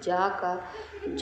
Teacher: जा वर्ण का उच्चारण स्थान होता है तालु